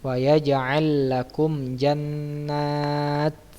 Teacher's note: Karena dibaca jelas ya. Kenapa dinamakan syafawi? Karena huruf mim keluar dari asyafatan atau kedua bibir ya.